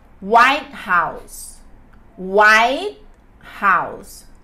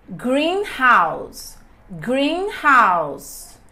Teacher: eu vou colocar ênfase no da frente tá no adjetivo